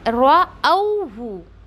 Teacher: रअौहु, रऊहु ऐसा नहीं पढ़ना है, राहु ऐसा भी नहीं पढ़ना है, क्यों, हम हमज़ा को वाव में लीन करते हुए रअौहु ऐसे पढ़ेंगे यहाँ पर